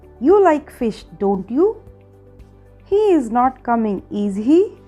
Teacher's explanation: Another use of raising tone is question tags that are real questions.